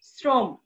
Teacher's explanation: র ফলা যুক্ত শব্দে অধ্বনি উচ্চারিত হয় ও ধ্বনির মতো। অর্থাৎ যদি র ফলা যুক্ত শব্দ থাকে তাহলে অধ্বনির উচ্চারণ হবে ও ধ্বনির মতো।